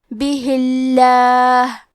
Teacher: کلمت بہی کے آخر میں ہا کے نیچے زیر ہے تو لفظ الجلالہ کلام کا حکم ہے ترقیق، تو ہمیں حرف اللام کو پتلی آواز میں پڑھنا ہے